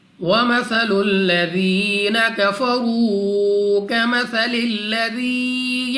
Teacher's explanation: سب سے پہلے ہے ثا، نرمی کے ساتھ ادا ہوگا۔ ذال کو بھی نرمی سے پڑھیں گے۔